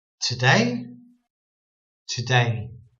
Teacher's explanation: we're putting the emphasis on day on the syllable two syllables we're putting the emphasis on the second syllable day today today